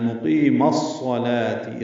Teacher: زبر ہے، صاد سے ملانا ہے، مقیم الصلاة، ادغام شمسی ہے، میم کو صاد سے ملایا جا رہا ہے، الف لام نہیں پڑھیں گے · قی یا مدہ ہے، دو حرکات لمبا کریں گے